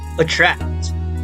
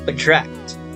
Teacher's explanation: But if you try to notice, attract, the stress is on tract, right?